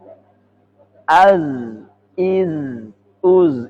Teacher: Ujung lidah dengan pangkal gigi seri atas